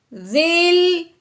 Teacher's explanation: ہم نے زال کو لام ساکن کے ساتھ ملانا ہے، لیکن لام کو ہلانا بالکل بھی نہیں ہے کیونکہ اکثر پڑھنے میں لام کو ضرور ہلا دیتے ہیں.